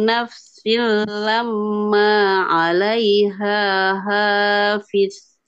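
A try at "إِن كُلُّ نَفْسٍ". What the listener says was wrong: Hati-hati, dengungannya kurang tahan, Ibu. In kullu. Coba. Ya, digabungkan. Silla di idgham bila gunakan. Silla. Lam juga sama Bu, afwan. Lamma. Tahan dulu, tahan.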